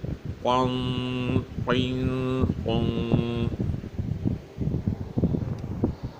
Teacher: تھوڑا زبان کے درمیان والا حصے کو اوپر کر کے آواز نکالیں گے تو یہ موٹا ہوگا۔ ہونٹوں کو گول کر کے ہرگز موٹا کرنے کی کوشش نہ کیجیے گا، یہ صحیح نہیں ہے۔ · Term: موٹی